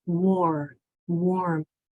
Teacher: Well, if it's a W-A-R or a W, any letter R, any vowel R, but in this lesson it's W-A-R, then we have to learn a new sound because that R is now changing the sound of the A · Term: or sound